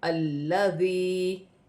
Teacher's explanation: یہاں پر حرکت دی جائے گی زبر کی اور یہاں پر یا مدہ ہے اسے ایک الف کی مقدار کھینچ کر پڑھا جائے گا